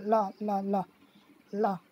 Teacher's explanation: ठीक है, देखो ला ला ला ला, दांत पे हल्का छू रहा है और हमारे मसूड़ों पे भी छू रहा है। अब ला, अगर हम दांत पे ही छुआएंगे तो हम नहीं बोल पाएंगे ला। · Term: पार्श्विक व्यंजन